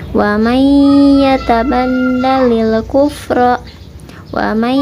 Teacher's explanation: Cara membacanya dimasukkan ke huruf yang kedua, kemudian ditahan 2 harokat, kemudian dimasukkan sampai ke hidung. Dirasakannya sampai masuk ke hidung. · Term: idgham bigunah